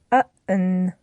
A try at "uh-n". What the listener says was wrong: Now, what you did there is a common difficulty, actually. You said, uh-un. You added a little bit of a vowel sound in there, un. We want to avoid that. We want to get it more just an n, just a straight n sound at the ending.